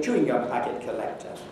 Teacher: And the stress is still on the beginning of the whole thing on the word chewing.